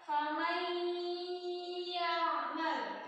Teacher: Ketika ada nun sukun bertemu dengan ya, ini ya ada di sini. Nunnya lebur muncul tasydid. Terus pakai guna karena ini dia guna. Ditahan 3 harokat. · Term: idgham bil guna